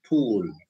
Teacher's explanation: it is aspirated it is stressed